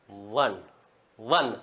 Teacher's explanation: नीचे के होठ और ऊपर के दांत के सटने से क्या होता है व बोला जाता है · व के उच्चारण में ऊपर का होठ काम नहीं आता क्योंकि ऊपर के होट सट ही नहीं नीचे के होठ और